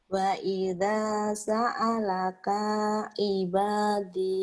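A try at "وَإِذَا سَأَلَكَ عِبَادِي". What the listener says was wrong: pendek. Coba lihat lagi.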